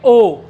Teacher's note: आधे होठ गोल हो गए।